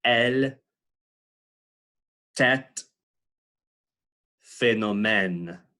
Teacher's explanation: Elle, tête, phénomène. So it's that wide open E sound like the English set. And there are a lot of words in French that you see this, and the English speaker doesn't really pick up the distinction between this sound and other E sounds because of the way our mouths work.